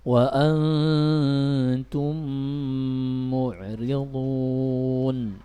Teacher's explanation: karena dia mim ketemu mim dan makhrajnya adalah khayshum dan juga ada di kedua bibir, maka pasti harus ada gunna atau suara dengungan pada rongga hidung